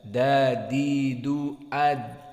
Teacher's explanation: Maka tarful lisan, ujung dari lidah menempel dengan usul as-sanaya al-ulya. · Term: makhraj dal